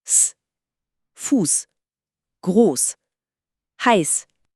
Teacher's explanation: Es ist immer ein reiner, harter Luftstrom ohne Stimme. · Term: scharfe S